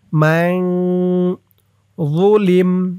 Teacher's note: এখানে ইকফা গুন্নাহ নুন সাকিনের পরে ইকফার হরফ য আসছে মান ইকফা গুন্নাটা নাকের ভিতরে লুকিয়ে করতে হয়